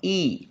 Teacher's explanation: Hamzah makhrajnya adalah di aqsal halqi yaitu pangkal tenggorokan dia berkasrah i ketika berkasr maka rahang gigi rahang bawah sedikit